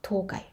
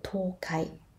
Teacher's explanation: But actually, 東海 is a 平板 word. 平板 words starts low and moves high.